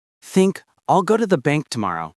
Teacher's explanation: The emphasis is on bank and tomorrow. That's where the rhythm is created. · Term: weak forms